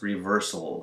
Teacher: It goes straight from the S sound into an L sound.